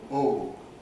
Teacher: in the english of 150 years ago in england and still in some kinds of american english we have rounding throughout the goat vowel